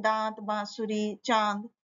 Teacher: अनुनासिक होता है जिसका नाक और गले दोनों से होता है